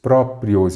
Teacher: palavras paroxítonas, porque a sílaba tônica é a penúltima, e todas são paroxítonas terminadas em ditongo crescente.